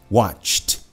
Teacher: porque acaba com tch, que não tem voz.